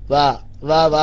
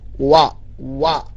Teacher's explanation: വാ പറയേണ്ടത് ചുണ്ട് കൂർപ്പിച്ച് പിടിച്ചിട്ടാ.